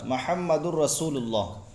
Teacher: रा आ रहा है, और रा में बगैर गुन्ना के हो गया इदगाम ना।